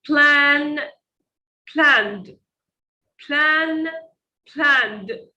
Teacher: Notice the sound at the end. Plan. It is voiced. There is vibration. So when we want to use the past, ed, we need to use a sound that also is voiced.